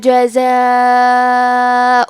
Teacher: کلمت جزاء میں مد واجب متصل ہے تو ہم اپنی آواز 4 مد کے برابر لمبی کریں گے